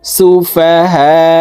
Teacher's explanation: তো আমরা এই হাকে চার আলিফ টানে পড়বো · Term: মধ্যে মুত্তাসিল